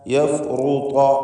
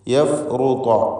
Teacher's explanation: യഫ്റുത റാഇന് തഫ്ഖീമുണ്ട്. ത്വാഇനും പൂർണ്ണമായ തഫ്ഖീം.